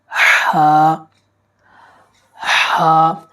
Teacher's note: یہ حرف حلق کے بالکل درمیانی حصے سے ادا ہوتا ہے۔ اسے بالکل صاف انداز سے نکالیں جیسے ہم سانس کو باہر نکالتے ہیں۔